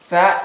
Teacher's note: The tongue sliding in between the front, upper and lower teeth in front.